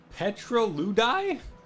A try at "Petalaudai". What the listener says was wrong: Petalaudai is how I would pronounce it. Petalaudai. There's no R.